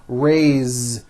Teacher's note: even though it is spelled with an S it's pronounced with a voiced Z